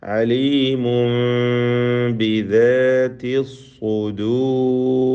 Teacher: അലീമുൻ തൻവീനിനെ ഇഖ്ലാബ് ചെയ്ത് മീമാക്കി മാറ്റി മണിച്ചുച്ചരിക്കണം. മീമാക്കുമ്പോൾ ഫലത്തിൽ അതിന് ഇഖ്ഫ ഷഫവി എന്ന സാക്കിനായ മീമിൻ്റെ ഹുക്മ് വന്നു ചേരുന്നതാണ്.